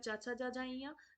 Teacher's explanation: तो यहाँ पर हमारा जो चा वर्ग उच्चारण है वो तालव्य से होता है